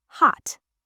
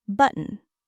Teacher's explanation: When a T comes at the end of a word or before a consonant sound like N, we often stop the air, we don't release the T.